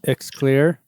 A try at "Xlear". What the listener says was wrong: Nope, it's just pronounced Clear. Clear. But no, like it's instead of a C, it's an X.